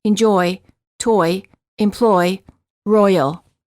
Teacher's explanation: The tongue is relaxed, moving from a mid-high position to a high position. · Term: Oi as in boy